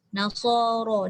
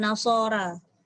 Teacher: So dengan ra tu sama level. So tebal, ra tafkhim juga.